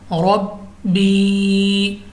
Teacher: या साकिन से पहले ज़ेर है हमने खींचा है